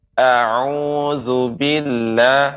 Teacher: ain ya, dia di tengah tenggorokan